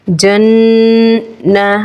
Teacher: नून प तद है एक अलिफ गुन्ना करेंगे